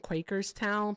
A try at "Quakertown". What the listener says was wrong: No, it's called Quakertown. No, you say Quakerstown. Quakertown.